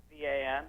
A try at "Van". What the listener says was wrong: Van. Sounds like you're saying Vam.